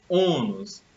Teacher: a sílaba tônica é o O, a sílaba pronunciada com mais força. Ônus. Então, observa que ela é terminada em US.